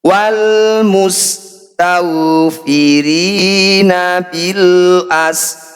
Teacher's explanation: Mad tabi'i bertemu huruf hidup dan dibaca berhenti, jadilah bacaan mad arid disukun. Ha kita panjangkan 6 harokat, huruf terakhir kita sukun. · Ro yang sudah kita sukun didahului fathah menjadi ro tafkhim, harus dibaca tebal. Sama dengan ayat sebelumnya, getaran huruf ro tidak boleh berlebihan, harus kita kurangi.